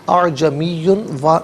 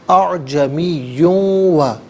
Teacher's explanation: اسے واو کے ساتھ ملا کر واو کی آواز کو غننے کے ساتھ ادا کریں گے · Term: یرملون کا قاعدہ